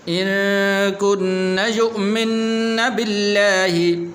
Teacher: یہاں پر لفظ اللہ کو پر نہیں کرنا، اس لیے کہ لفظ اللہ سے پہلے زیر ہے